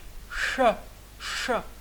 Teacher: C'est un sibilant cérébral. Donc, c'est comme si on prononçait le ch de chemin, mais en mettant la langue au palais mou, au niveau du palais mou.